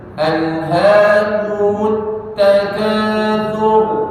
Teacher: jadi taknya jangan monyong huruf ta tidak ikut monyong dia tarik